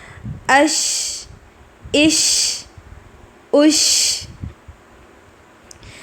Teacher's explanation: زبان کا درمیانی حصہ اوپر کے تالو کو لگے گا تو شین ادا ہوگا. شین کی ادائیگی کے وقت اس میں پھیلاؤ پایا جاتا ہے, اور یہ صرف شین کے اندر ہی پائی جاتی ہے. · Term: تفشی